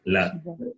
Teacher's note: tongue touches just above the upper teeth